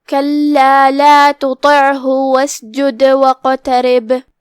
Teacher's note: قاف پہ جو کہ جزم ہے تو ہم قاف کو ہلاتے ہوئے یہ کلمہ پڑھیں گے · یہاں حرف الراء ہے اور اس کے نیچے زیر ہے، لہذا را کو ہلکی آواز میں پڑھنا ہے